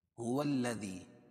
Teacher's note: واو کو لام میں ملائیں کیونکہ لام پر تشدید ہے